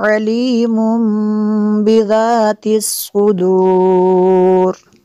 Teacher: تنوین کے بعد با آ جائے نون ساکن یا تنوین کے بعد، تو اس جو تنوین کا نون ساکن ہوتا ہے اس کو میم سے بدل کے پڑھتے ہیں۔ علیم بذات، ذال کو نرم کرنا ہے۔